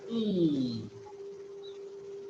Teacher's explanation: it can be called as a front unrounded vowel between closed and half closed. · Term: short E